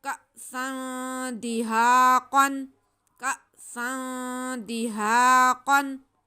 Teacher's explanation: तनवीन के बाद हुरूफ़ इख़्फ़ा है दाल, यहाँ पे गुन्ना होगा, इसे खींच के पढ़ेंगे